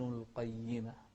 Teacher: الهمس في الهاء القيمة، كذلك نراعي القاف المفخمة القيمة